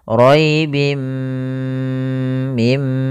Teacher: memasukkan tanwinnya ke mim dan ditahan gunahnya. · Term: idgham bighunah, idgham bi gunnah